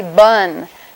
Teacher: has only the one difference that your vocal folds are vibrating it's made with a bilabial voiced stop B